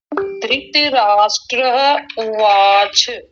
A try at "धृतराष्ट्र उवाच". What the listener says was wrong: उवाच नहीं, उवाच, च को पूरा करेंगे।